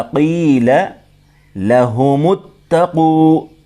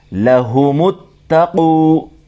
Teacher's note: میم کو ملائیں گے تا کے ساتھ